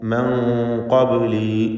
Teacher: മൻ ഖബ്ലി, ഖബ്ലി ബാഇൻ്റെ സുക്കൂനിനെ ഖൽഖല സുഗ്റ നൽകി ശബ്ദം ചലിപ്പിക്കുക. മൻ ഖബ്ലി, ഖാഫിന് പൂർണ്ണമായ തഫ്ഖീം കൊടുക്കണം.